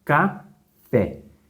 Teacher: então de fato a sílaba mais forte é o fé